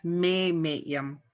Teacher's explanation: the first may is accented so we say that vowel louder than the rest